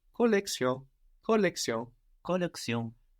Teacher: Now, it's spelled the same, but we notice an S sound instead of the sh that we have in English, collection, and in French, collection, like with an S. And we also notice that the N is barely heard, barely pronounced, or not heard, but it's not exactly silent. We don't ignore it totally.